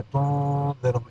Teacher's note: حروف اخفا میں سے یہاں زال آ گیا، تنذرہم اخفا ہو گیا